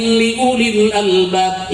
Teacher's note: make waw na mati cek tajwid mah kudu panjang, tapi dibaca teu panjang